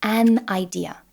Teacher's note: So instead of saying a idea, we prefer to close the mouth in between and say an idea